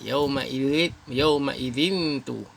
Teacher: Ni nun tanwin 2 baris di bawah bertemu dengan huruf ta ni. Jadi dengung 2 harakat.